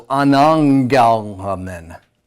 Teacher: The first gamma will sound like an N. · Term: gamma nasal